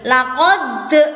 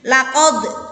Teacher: Ya, laqad dipantulkan, tapi nggak usah terlalu mantul yang tebel. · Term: qalqalah sugro